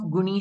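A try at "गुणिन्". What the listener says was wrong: Gunin. Gunin. It is gunin. So the nakara is being dropped.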